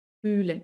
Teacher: Y la H, tenemos vocal H, la H no suena. La H no suena, al contrario, alarga esa vocal.